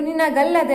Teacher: ಲೋಪವಾಗಿದೆ ನಿನಗೆ ಪ್ಲಸ್ ಅಲ್ಲದೆ ನಿನಗೆ ಏಕಾರ ಇಸ್ ಈಕ್ವಲ್ ಟು ನಿನಗಲ್ಲದೆ ಆಗುತ್ತದೆ ಇಲ್ಲಿ ನಿನಗೆ ಏಕಾರ ಇಲ್ಲಿ ಲೋಪವಾಗಿದೆ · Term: ಏಕಾರ ಲೋಪವಾಗಿದೆ